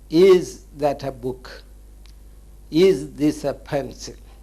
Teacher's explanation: yes or no questions like is that a book is this a pencil the ending is in the rising